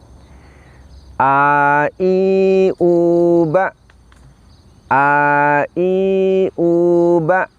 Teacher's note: Huruf hamzah kita ucapkan dengan cara menahan nafas dan juga menahan suara. Kemudian posisi lidah kita istifal, lidah kita turun ke bawah.